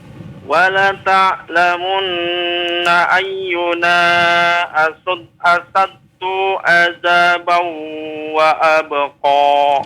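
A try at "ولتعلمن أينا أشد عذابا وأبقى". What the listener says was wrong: Iya, cukup. Barakallahu fik.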